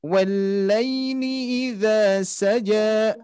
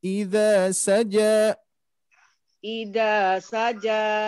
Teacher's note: jangan ada tekanan di huruf ja-nya karena di sini tidak ada huruf yang sukun ya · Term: mengalir saja